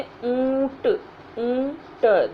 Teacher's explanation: जैसे ऊंट, ऊंट, देखिए इसमें ऊंट में नाक और मुंह दोनों का ही प्रयोग किया गया है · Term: अनुनासिक